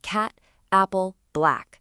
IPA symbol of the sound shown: æ